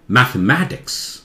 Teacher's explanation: मैथ को थोड़ा सा जोर से, ये मैथ को बहुत जोर से, जैसे आवाज ऊंची हो जाए वो एक्सेंट ठीक हो जाए, मैथमेटिक्स ऐसे बोलते हैं, इसे बोलिए।